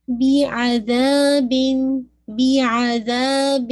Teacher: ذا کو 2 کاؤنٹ آپ نے پڑھنا ہے